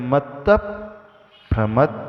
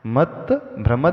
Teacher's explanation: उसमें एक्स्ट्रा एक स्वर का उच्चारण किया जाता है मत भ्रम ऐसा सुनाई देगा कि हम भ को एक्स्ट्रा उच्चारण कर रहे हैं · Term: संयुक्त अक्षर